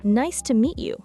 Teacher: 2 stress points. Nice and meet give the emphasis. Everything else is quick and light.